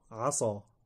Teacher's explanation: اذا اخرج الانسان السين مفخمه لم يعطها صفاتها فانه ينطق عصا عصى ربكم ان يرحمكم تصبح عصا وهذا تغير كبير في المعنى